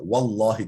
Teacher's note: Orada vav fethalidir. Allah lafzının lamı kalın okunur. Efendim vallahi efendim Resulullahi yani ondan önceki harf dammeli veya fethali ise üstünse veya ötre ise o Allah lafzının lamı kalın okunur.